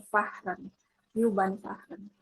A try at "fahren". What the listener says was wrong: Apakah H dibaca? Nah, jangan lupa. Jadi dia tidak baca H itu ya.